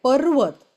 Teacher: पर्वत मध्ये प वरती आघात आलेला आहे, पर्वत